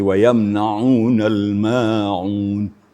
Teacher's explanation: Jangan sampai ain ee mengarah kepada huruf hamzah di wayamnaunal maun. Dires rasakan getarannya pada pertengahan tenggorokan kita.